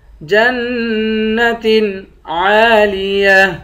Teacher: جیم کو نون سے ملا کر نون پر غنہ کریں گے